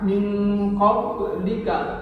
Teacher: ada qalqalah sughra di ayat ini pada kata min qablika, tidak terlalu nampak. Min qablika, qaf ba yang bersukun.